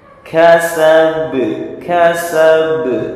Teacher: Qalqalah kubro yaitu bacaan dipantulkan